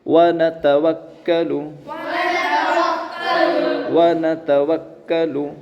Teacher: دوسری لائن میں دیکھیے واو پر زبر ہے اس کے بعد نون پر زبر ہے اس کے بعد تا پر اس کے بعد واو پر اور اس کے بعد کاف پر کیا ہے؟ تشدید ہے تو واو کو کاف سے ملائیں گے